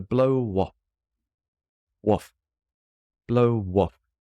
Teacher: with blow off, the W joins the next word. They all get pushed forward. So it's just to blow waff.